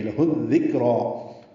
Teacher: ہا کو دال سے جو ملا رہے ہیں ادغام شمسی ہے، دال کاف نرمی سے، را پر 2 حرکات لمبا کریں گے۔